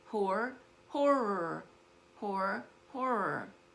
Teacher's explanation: when you say the word horror, you want to exert a little extra air so you don't mix it up with the word whore